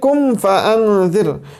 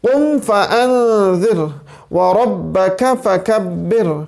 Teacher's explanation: یہ دو نقطوں والا قاف ہے، یاد رکھیے ہمیشہ پر پڑھا جائے گا